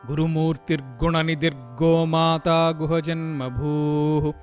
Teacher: స్తోత్రంలో దరాందోళిత దీర్ఘాక్షి దరహాసోజ్వలన్ముఖి గురుమూర్తిర్గుణనిధిర్గోమాత గుహజన్మభూః. సంధి ఏర్పడినప్పుడు అక్కడ రేఫం వచ్చి చేరింది. రేఫం అంటే రకారం వచ్చి చేరింది కాబట్టి గుణనిధి కాస్త ర్గుణ అంటే గురుమూర్తిర్గుణ అయింది.